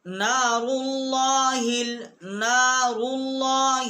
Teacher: لام سے پہلے جو الف ہے یہ حمزہ ہے، یہ لکھنے میں ہے یہ پڑھنے میں نہیں آئے گا۔ نار اللہ ایسے ہم پڑھیں گے۔